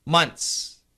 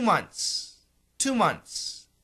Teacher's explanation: the n and the S are really strong the th is weak so we can cancel the th